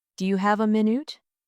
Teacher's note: Do you have a minute? The stress is on have and minute.